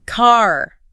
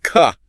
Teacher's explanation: in British English, that R at the end of the word often softens or disappears completely. So car becomes more like ka.